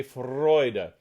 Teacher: you want to get a good rolled r going